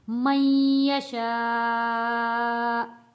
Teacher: جب ہم وقف کریں گے حمزہ کا پیش ختم ہو جائے گا تو یہاں حمزہ کے اوپر جزم آ جائے گا، تو یہاں پہ ہم نے جھٹکے کے ساتھ رکنا ہے